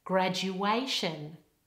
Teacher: the word graduation, okay, where the stress is on A before shin.